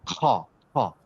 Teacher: তো খ হচ্ছে থ্রোটের উপরের দিকে থাকে, এ কাউকে টাচ করে না। খ খ বাতাসটা বের করার সময় গলার উপর থেকে বের করে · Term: থ্রোট লেটার